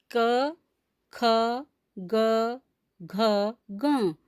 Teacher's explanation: इनका उच्चारण स्थान कंठ होता है